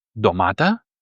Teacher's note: You can tend to separate the N and the T from each other and have an NT pronunciation or you can really have a full D where the two letters are not separate but they produce a new sound together